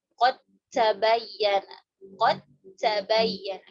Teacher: hilangkan sifat qalqalahnya, kita hilangkan. Kita langsung masukkan huruf ta.